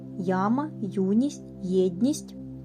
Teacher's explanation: йотовані Букви я ю є позначають сполучення двох звуків й та а й та у й та е